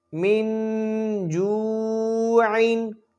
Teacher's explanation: حروف اخفا میں سے جیم آئی ہے، تو لہٰذا یہاں غنہ ہوگا